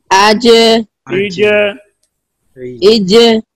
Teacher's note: जीम में कलकला भी है, तो लगने के बाद यहाँ पे हरकत होगी, जुम्बश पैदा होगी।